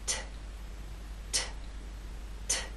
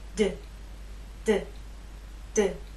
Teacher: There is more air released. There's a puff, a strong puff with the T. That strong puff is not present with the D.